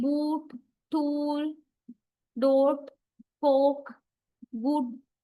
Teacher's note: And this lip rounding occurs specifically because following sound is a lip rounding vowel.